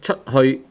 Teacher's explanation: chut is the first tone. Hui is the third tone.